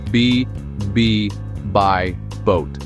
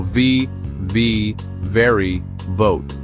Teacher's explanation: B is just like in Spanish, but the V actually vibrates with your teeth on your lower lip. Try this exercise with me.